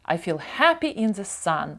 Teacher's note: тут у нас слово Feel подвійне і читається як довге і переважно подвійні літери подовжуються I feel Happy in the Sun Happy